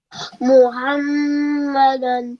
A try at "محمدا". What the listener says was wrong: Ha must be sharper. Muhammadan